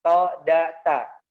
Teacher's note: Yang pertama keluar dari gusi, ya, ujung lidahnya di gusi.